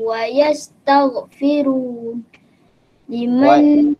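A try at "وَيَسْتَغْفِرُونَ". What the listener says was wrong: Kalau nak berhenti, berhentilah. Wa yastaghfirun. Panjang sikit. Ambil wa yastaghfiru.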